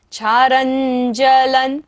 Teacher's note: रा के ऊपर बिंदी है और बाद में क्या है? ज, तो बिंदी का उच्चारण क्या होगा? न।